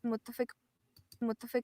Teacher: has its axon on the first syllable because it's heavy uh we see that the low tone is on that first syllable